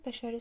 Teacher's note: Bəşəri sözündə yenə düşür sonuncu üçüncü hecayə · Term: vurğu